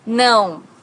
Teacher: no has a very unique sound in portuguese because it's a nasal sound